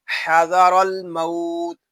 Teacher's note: یہاں را کو پر پڑھیں گے کیونکہ را کے اوپر زبر آ گیا ہے